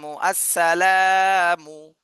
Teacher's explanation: তাহলে লামে শুধু এক আলিফ টান দিতে হবে লামে আর সব জায়গায় দ্রুত বলতে হবে